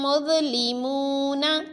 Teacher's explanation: ذا کو پر بھی پڑھا اور نرمی سے پڑھا، کیونکہ ذا حروف مستعلیہ میں شامل ہے تو پر پڑھا، اور حروف لسویہ میں شامل ہے اس لیے نرمی سے پڑھا۔